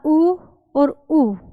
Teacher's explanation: ऊ और ऊ, इन दोनों का जो उच्चारण होगा वो ओष्ठ्य है, ओष्ठ्य की हेल्प से होता है।